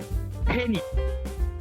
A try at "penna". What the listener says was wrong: We don't pronounce E's like you do in English. Eh. Eh? Eh. You were very close actually. It's penna.